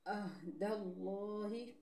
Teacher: ینقضون، یہاں پہ واو مدہ ہے۔ عہد اللہ، لفظ اللہ کے لام سے پہلے زبر ہے، لفظ اللہ کو موٹا پڑھیں گے